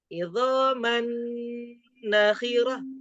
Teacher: Kunna, nanya juga diayun. Idzaman, nanya jangan diayun karena nanya pendek, ditahan aja